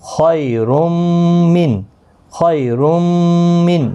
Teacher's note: میم پر گنہ کے ساتھ پڑھیں گے. ادغام بھی ہوگا، را کے ساتھ ملے گا بھی اور گنہ کے ساتھ بھی پڑھیں گے.